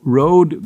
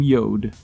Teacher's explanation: Even so, one of the letters that foxed her was the letter R. Whenever R was prominent, she substituted with Y.